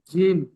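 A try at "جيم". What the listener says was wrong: ঠিক এমন 3 আলিফ টান দিয়ে বলেন। আর একটু বেশি। এখানে যে অক্ষরগুলো টান দিয়ে পড়ছেন, যেমন জিম, জিম অক্ষরটি, এ অক্ষরটি 1 আলিফ টান হচ্ছে, জিম অক্ষরটি 3 আলিফ টান হচ্ছে। এই অক্ষরটি টান দেওয়ার উদ্দেশ্য হলো আপনি টান দিয়ে যখন পড়বেন অক্ষরের উচ্চারণটি সঠিক হবে। জিম, পরিপূর্ণ শুদ্ধতা ভাবে অক্ষরটি উচ্চারণ হবে, সেই জন্য করে টান দিয়ে বলা।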